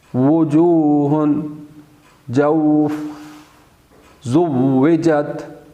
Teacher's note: اور واو دونوں ہونٹوں کو گول کرنے سے ادا ہوتا ہے، جیسے وجوہ، جوف، زوجت، یہ دونوں ہونٹوں کو گول کرنے سے ادا ہوتا ہے۔